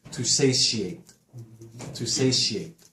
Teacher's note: Satiate is a verb. The T makes an SH sound here, the first T. Not to satiate, to satiate.